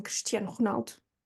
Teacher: that I before an S that sounds like a sh is mute in Portuguese